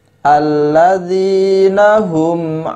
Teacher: mim sukun bertemu dengan huruf ain. Hukum bacaannya adalah idhar syafawi, dibaca dengan jelas.